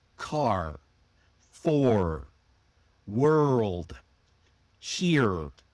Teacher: In many other forms of English like British or Australian English, the R at the end of a word is often dropped, but not in American English. The R is strong. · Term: post vocalic R